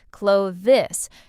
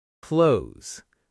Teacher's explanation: >> This one's tricky because of the th and S together. A lot of learners say every sound clearly, clo-this, but native speakers often blend it into something closer to clothes.